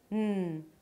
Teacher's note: the tip of the tongue goes up and touches the upper palate and still, you release air through the nose.